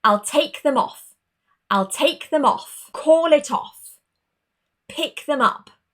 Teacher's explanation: when we use an object pronoun, the stress changes. We stress both the main verb and that particle is also important